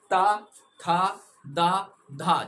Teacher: आपकी जीभ आपके ऊपरी दांतों से टच होगी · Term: दंत व्यंजन